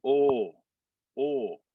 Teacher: it's like the american oh but it's a little bit more constrained